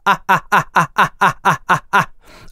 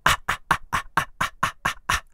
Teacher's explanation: Вот это как раз те мышцы, которые управляют голосовыми связками, и вы сейчас ритмично смыкаете и размыкаете голосовую щель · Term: гортанная смычка